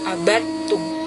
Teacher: Artinya dimasukkan karena bertemu dengan huruf yang sejenis ya. Jadi dalnya tidak perlu dibaca langsung, masuk ke huruf ta ya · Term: idgham mutajanisain